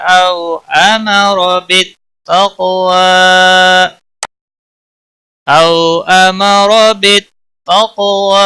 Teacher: او واولین ہے، تھوڑا نرمی کے ساتھ کھینچ کر پڑھیں گے، امارا، را کو زبر کی وجہ سے پر پڑھیں گے، باقی کسی بھی حرکت والے حرف کو کھینچنا نہیں۔